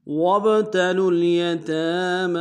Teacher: با حرف قلقلہ سے قلقلہ کریں گے، لام کو اگلے لام کے سامنے لانا ہے، لام ساکن گناہ نہیں ہوگا۔